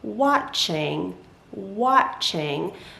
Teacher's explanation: it's like the ah sound but it's like a little bit stretched so instead of saying watch or watch we say watch watch